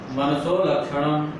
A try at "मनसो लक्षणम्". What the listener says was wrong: मनसो लक्षणम, मनसोर नहीं ना बोल रहे हो, मनसो लक्षणम, ऐसे साथ बोलो। इंद्रियत्वम मनसो लक्षणम, मनसः लक्षणम भी सही, मनसो लक्षणम ये भी।